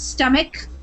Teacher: So that CH sound there is kind of like a K, actually, in this instance